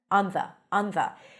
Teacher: place the tongue on the teeth for the N